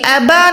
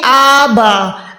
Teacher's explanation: ہم نے الف کو بھی 1 سیکنڈ لمبا کرنا ہے۔ اس کے بعد بال زبر با کو کم سے کم آپ نے 4 سیکنڈ کھینچنا ہے، 4 سیکنڈ لمبا کرنا ہے کیونکہ یہاں پر بڑی مد ہے۔